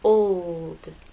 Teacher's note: It's important to make the L long enough so that it's heard. If you try to say this word too quickly, people may not hear your L.